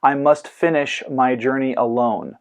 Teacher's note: The syllables fin, jour, and lone are stressed while the 2 syllables coming before each of them are short. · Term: anapestic